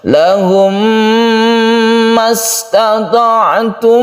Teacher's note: Idgham mimi adalah apabila ada mem mati bertemu dengan mem dan cara membacanya itu diidghamkan, dimasukkan ke mem berikutnya, sehingga ini membentuk tasydid mem. Tasydid mem ini adalah cara membacanya, yaitu kita dengungkan, kita gunnahkan cara membacanya.